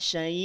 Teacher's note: Ada hamzah di sana, sukunkan. Hamzahnya sukun, maka putus suaranya.